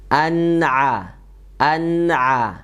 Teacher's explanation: Huruf ain makhrajnya itu di tengah tenggorokan ya. Dan sifatnya tipis ya.